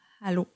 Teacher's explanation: au lieu d'avoir un « a » qui est très clair, je vais vraiment mettre plus de l'air. Je vais comme « allô » versus « allô ». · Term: L'initiation douce